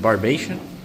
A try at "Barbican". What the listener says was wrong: Barbican. Barbican. There's no I after that C, so it's okay.